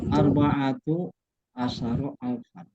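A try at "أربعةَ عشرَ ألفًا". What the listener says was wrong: Arba'ata ya. Kenapa arba'ata? Ya harus dua-duanya harus fathah. Ya kan, ya udah dijelaskan. Arba'ata arba'ata asyara alfan.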